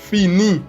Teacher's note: La N en este caso no se pronuncia, indépendance, F, que como habíamos dicho anteriormente es un sonido fricativo, en donde existe fricción de los dientes superiores con el labio inferior